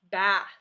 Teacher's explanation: I hear it Rumble in the beginning but not in the end so I know in this word is unvoiced let's go ahead